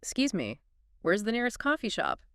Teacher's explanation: They'd first say it with a typical American accent and then switch to a British pronunciation, softening that R and subtly shifting the intonation